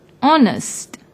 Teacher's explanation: although it starts with H it is silent when we pronounce the word honest